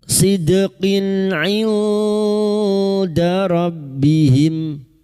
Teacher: Huruf qaf yang berharokat kasrah tanwin bertemu ain idhar halki. Kasrah tanwin dibaca jelas tanpa mendengung.